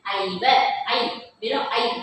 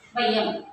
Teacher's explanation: அளவு வரைக்கும் இறுதியில் ஒரு மாத்திரை அப்போ இதற்கு உரியது என்னது ஐகார குறிக்கம் தனித்து ஒலிக்கும் போது தனக்குரிய இரண்டு மாத்திரை அளவு ஒலிக்கும் ஆனால் சொல்லினுடைய முதலில் ஒலிக்கும் போது ஒன்றரை